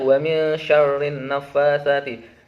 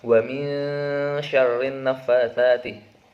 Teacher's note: Hukum bacaan dari potongan ayat ini adalah ikhfa hakiki dibaca dengung sebanyak 2 harokat